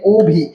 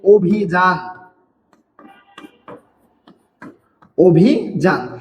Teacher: আদ্য অ এর পরে রয়েছে রস্বই, তার কারণে এখানেও অ এর উচ্চারণ কিসের মতো হবে? অ এর উচ্চারণ ও এর মতো হবে।